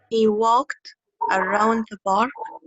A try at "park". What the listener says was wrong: Again, it's not bark, it's park. Park.